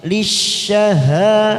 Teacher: Wa aqwamu lisyaha masuk kata huruf shin yang bertasdid. Lisyaha fathah diikuti alif 2 harokat.